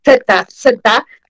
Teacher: bien su Z interdental, fonética y fonología es ese tema, Z, Z, sacan la lengua entre los dientes